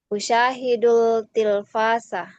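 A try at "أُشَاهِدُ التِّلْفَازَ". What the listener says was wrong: Tapi ini alif lamnya syamsiah ya, Ukti. Jadi tasdid. Usyahidut. Alif lamnya bertasdid. Di taknya ada tasdid. Jadi nggak dibaca lagi alif lamnya. Bukan usyahidul. Tapi usyahidut tilfaz.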